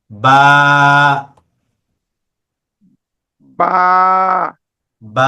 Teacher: বাটা হলো দুই ঠোঁটের বীজ অংশ থেকে।